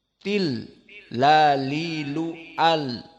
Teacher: Di saat disukunkan tidak bisa lari si nafas dari lam ini. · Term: sifatul jahr